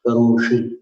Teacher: श में ऊपर जीव ले जाना, मूर्धन्य श